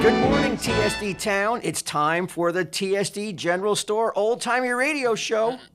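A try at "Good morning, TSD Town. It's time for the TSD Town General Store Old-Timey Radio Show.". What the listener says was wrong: TSD Town General Store. No, you didn't. You said TSD General Store.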